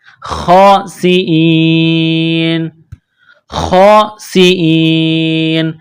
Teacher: جب یہاں سٹاپ کریں گے تو نون کو سائلنٹ کریں گے